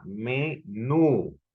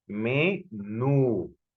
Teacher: en la nu hay una intensidad mayor de voz que en la otra sílaba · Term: sílaba tónica